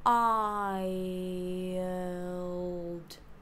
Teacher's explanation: For wild, we have the same diphthong like an I starting in the center.